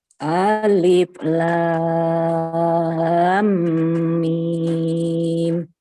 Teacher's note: mimnya ditahan lebih lama lagi, Bu. 2 harokat.